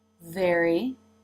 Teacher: the tongue is beginning to move into position for the r consonant sound in very even as the jaw has dropped for the e as in bed vowel so the tongue does not stay down in the a position